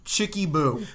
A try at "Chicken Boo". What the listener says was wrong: Chicken Boo. you call It's not Chicky Boo. It's Chicken Boo. Chicken. See, you just said Chicky. With a Y. No, it's Chicken Boo.